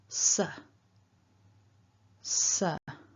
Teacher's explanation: this hissing and then a schwa a weak vowel so sir sir we've also got this little r tagged on